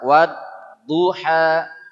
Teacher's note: huruf Dod ini bunyi dia mendekatkan pangkal tepi lidah ini ke gigi geraham atas kanan kiri atau kedua-duanya